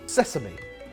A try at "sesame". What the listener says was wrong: No, sesame. Ses. Where's the Z?